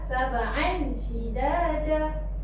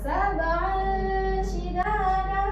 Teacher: Yang betulnya sab'an shidada sebab tanwin ni adalah baris tanwin, dua baris di atas bertemu dengan huruf shin. Dia dengung.